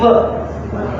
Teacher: it's not W like English W it's more like V just a bit more voice